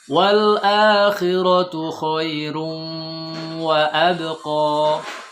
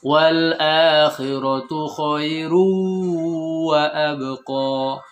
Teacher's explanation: masukkan tanwinnya ke waw. Jadi melebur. Sehingga tidak kedengaran lagi bunyi N. Yang kedua, panjangkan 3 harokat. Yang ketiga, masukkan ke hidung. Sehingga berbeda dengan waw syaddah.